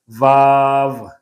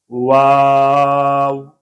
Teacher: मैं वाव के ऊपर होंठ गोल कर रहा हूँ। उस गोल करने के अंदर ये आवाज़ खुद ब खुद पैदा हो रही है, मैं नहीं पैदा कर रहा, मैं नहीं बना रहा।